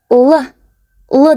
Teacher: Л десек, балалар, тіліміз таңлайымызға тиеді. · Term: л дыбысы